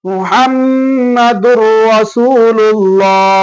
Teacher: ராவோ லாமோ வந்தா அழுத்தாம ஓதணும் வெறும் இணைச்சி மட்டும் ஓதணும். · முஹம்மதுன் இருக்கின்றதுனால துன் ரசூலுல்லாஹ் சொல்லுவாங்க. இல்ல, அதை இணைத்து சொல்லணும். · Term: குன்னா இல்லாமல்